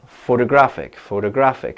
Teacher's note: Photographic, the third one is stressed. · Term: word stress